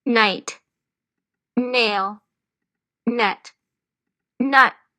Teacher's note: இந்த நாக்கு மேல் பல்லு உள்ளார மேல் பல்ல தொட்டு அப்படின்னு சொல்லுவோம்